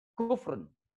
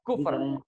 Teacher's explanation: Orang Arab biasa menyebutkan perkataan itu dalam komunikasi sehari-hari itu disukunkan di ujungnya. Jadi kufrun itu mereka sebut menjadi kufur.